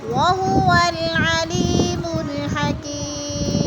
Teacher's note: وہو العلیم الحکیم، علی کی میں یا مدہ ہو رہی، یا ساکن سے پہلے لام کے نیچے زیر ہے تو یا مدہ، اور حکیم میں بھی یا مدہ ہو رہا ہے کیونکہ یا ساکن سے پہلے کاف کے نیچے زیر ہے تو ادھر بھی یا مدہ ہے۔